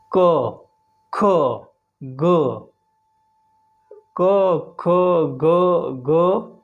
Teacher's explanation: जब हम इन वर्णों को बोलते हैं तो हमारे कंठ से आवाज आती है। कंठ से जीभ कहीं टच नहीं होती है। क ख ग क ख ग अंग अ आ। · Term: कंठ्य